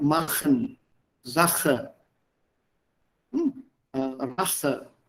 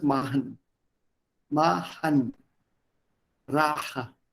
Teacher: So the ch would not be audible.